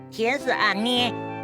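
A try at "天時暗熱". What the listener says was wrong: 不 是 捏 ， 天 时 暗 热 。 不 是 捏 来 捏 去 的 捏 啦 。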